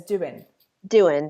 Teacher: people pronounce the ing endings as in